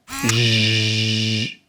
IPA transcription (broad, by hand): ʒ